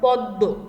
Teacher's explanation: পদের মধ্যে বা শেষে মফলা যুক্ত হলে উচ্চারণে সেই বর্ণের দ্বিত্ব হয় এবং সামান্য নাসিক্য স্বর হয়। সেই বর্ণের মানে ম যেই বর্ণের সাথে আছে উচ্চারণ করার সময় সেই বর্ণকে দ্বিত্ব করে উচ্চারণ করতে হবে, মানে 2 বার সেই বর্ণটির উচ্চারণ আসবে এবং শব্দটি একটু আনুনাসিকভাবে বা নাসিক্যভাবে উচ্চারণ করতে হবে।